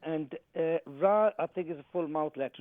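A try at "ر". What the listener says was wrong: No, ra empty mouth, kasra.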